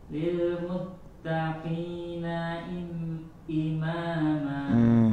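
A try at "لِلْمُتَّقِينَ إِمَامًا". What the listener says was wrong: Imam, jangan panjang, lanjut.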